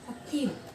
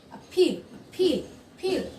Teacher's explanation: অ্যাপিলের ক্ষেত্রে এ পিটা আগে আছে, এ পিটা হচ্ছে অ্যাসপিরেটেড সাউন্ড, বিকজ এখানে হচ্ছে এটার আগে একটা কমা ইনভাইটেড আছে, বা এটাকে একটু জোর দিয়ে বলতে হবে আপিল, ফিল, ফিল।